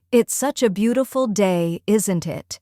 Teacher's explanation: Let your tone go up slightly at the end.